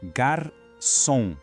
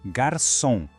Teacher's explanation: O C vai ter o som de S e o ON é aquela nossa vogal nasal.